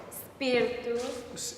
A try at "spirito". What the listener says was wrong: It's spirito, I believe. It's an O vowel, right? And it's an Italian. There are open and closed O vowels, right? Italians never speak or sing with closed vowels. They just, O vowels. They always are open.